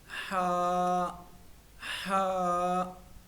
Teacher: आउज बिल्ला शैतानिरजीम बिस्मिल्लाहिर्रहमाहीम पहला हर्फ है हा का जो मखरज है मखरज कहते हैं अदा करने की जगह को वो हल्क है मेरे अजीजों हल्क के तीन हिस्से हैं एक निचला हिस्सा ये वाला और एक दरमियाना हिस्सा एक ऊपर वाला हिस्सा तो ह जो है ये हल्क के दरमियाने हिस्से से अदा होता है और इसमें नरमी की सिफत भी है। · ہا جو ہے یہ حلق کے درمیانے حصے سے ادا ہوتا ہے، اور اس میں نرمی کی صفت بھی ہے